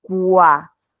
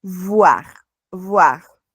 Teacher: Por ejemplo, aquí pueden observar que he pronunciado voir y aquí he pronunciado quoi. Cada vez que tenemos la OI en francés, eso va a sonar como UA.